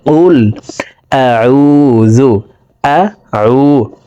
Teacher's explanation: আইনকে হলকের মধ্যখান থেকে উচ্চারণ করব। কারণ আইনের মাখরাজ হলকের মধ্যখান থেকে হবে।